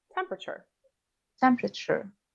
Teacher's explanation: the p is often not pronounced right so you can link the p to the r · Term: elision